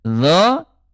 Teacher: Kalau dho tebal dia terangkat pangkal lidahnya